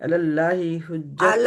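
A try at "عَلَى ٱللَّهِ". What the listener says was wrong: अल्लाह, आइन को निकाले,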